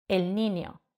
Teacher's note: la eñe se conserva en palabras que se usan en inglés como por ejemplo el nombre del fenómeno meteorológico el niño Pero en esos casos se suele pronunciar como una ni